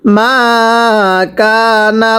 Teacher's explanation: কাফ আলিফ জবর কা, মা কা, নুন লাম জবর নাল, লাম খারা জবর ল, হা পেশ হু, মা কানাল্লাহু। এখানে আল্লাহ শব্দের পূর্বে জবর আছে, আল্লাহ শব্দটিকে মোটা করে পড়তে হবে, ল করে পড়তে হবে।